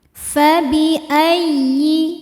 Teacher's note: ya tasydid dibaca dengan nabr. Nabr artinya menaikkan intonasi suara. Jadi jangan ditahan kalau sebelum ya ya tasydidnya bukan nun sukun atau tanwin. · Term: nabar